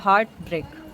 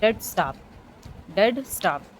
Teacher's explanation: तो हार्ट ब्रेक, ये इसमें कोई डिवीज़न नहीं है, सिर्फ बीच में ही डिवीज़न है हार्ट और ब्रेक के बीच में. तो ये दो सिलेबल्स हैं, दोनों स्ट्रेस्ड हैं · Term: स्पंडी